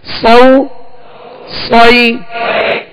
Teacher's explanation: صاد کو سیٹی کی آواز میں اور پر پڑھیں گے, موٹا پڑھیں گے, حروف مستعلیہ میں سے ہیں.